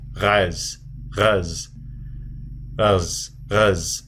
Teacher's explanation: the word for goat, ghaz, it starts with an ayin, so you gutturalize it